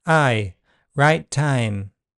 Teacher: In RP, a more front starting point is common. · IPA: /ʌɪ/, [aɪ], /aɪ/